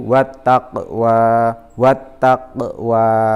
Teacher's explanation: Pada huruf qa itu dibaca dengan memantul karena termasuk hukum bacaan qalqalah.